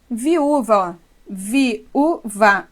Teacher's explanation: O U está sozinho na sílaba tônica, forma hiato com vogal da sílaba anterior, por isso que ela tem que ser acentuada. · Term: segunda vogal de hiato